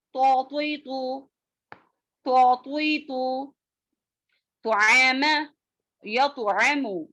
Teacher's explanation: تو کی آواز موٹی اور جھٹکے والی ہوتی ہے